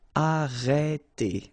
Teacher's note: Okay, remember when you get this accent circonflexe on the top of E, then you get the sound E. Okay, so it's really open.